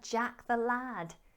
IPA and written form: dʒæk ðə læd (jack the lad)